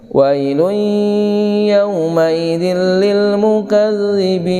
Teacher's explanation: tanwin bertemu dengan ya, idgham bi guna untuk didengungkan juga.